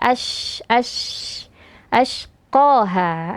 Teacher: satu eh sifat istimewa yang hanya dimiliki oleh syin saja itu sifat tafasyi ya jadi udaranya itu menyebar